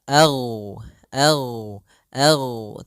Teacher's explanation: huruf gain tidak ada sifat Qalqalah tidak ada sifat pantulan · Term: jahar